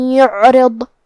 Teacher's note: حرف الضاد کی ادائیگی زبان کے کروٹ اور اوپر کے داڑھوں کے جڑ سے ہے اور ضاد حروف التفخیم میں سے بھی ہے تو ہمیں یہ حرف کو بھاری آواز میں اور منہ پھلا کے ادا کرنا ہے